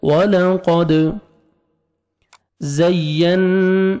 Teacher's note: وَلَقَدْ واو پہ لپس کو راؤنڈ میں لے کے جائیں گے، قوف کو موٹا کر کے پڑھیں گے، دال حروف قلقلہ میں سے ہے، ڈبل ساؤنڈ آئے گا